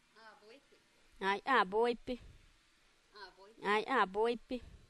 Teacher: Almost every word she closes with her lips, final. And it sometimes it just triggers nasalization way before.